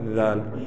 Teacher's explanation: آپ کے جو سامنے کے دونوں دانت ہیں اس کے اندر تھوڑی سی زبان کو لے آئیں تو ذال ادا ہوگا. دونوں دانتوں کو آپس میں بالکل نہ ملنے دیں، ہلکی زبان لازمی آئے تو خود بخود کیا ادا ہوگا؟